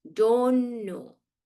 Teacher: There's no T in the pronunciation of don't know.